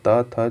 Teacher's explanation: तो जो पहला और दूसरा जो वर्ण होता है कोई भी वर्ग का, उसको क्या बोला जाता है, अघोष वर्ण बोला जाता है।